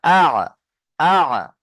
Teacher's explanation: আইন কোত্থেকে উচ্চারণ হয়? কণ্ঠনালীর মাঝখান হতে